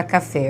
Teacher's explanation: café, a sílaba tônica é o fé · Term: oxítona